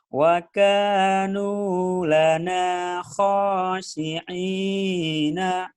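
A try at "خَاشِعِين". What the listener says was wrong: Shinnya gede. Shin. Khoshi. Ayo lagi. Wa. Wa kanu lana khashi'ina.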